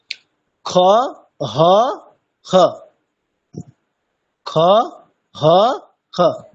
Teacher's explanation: যে ধ্বনিটা যেটা শোনা যাবে সেটা ঠিক হ এবং খ এই দুটোর একটা মিক্সড আপ, দুটোর একটা মাঝামাঝি। দেখুন খ হ খ, খ হ খ, মানে খ এবং হ দুটোরই স্পর্শ থাকবে। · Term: অর্ধেক খ